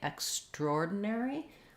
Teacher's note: i would say more people use that than extraordinary because the we tend to reduce that syllable of extra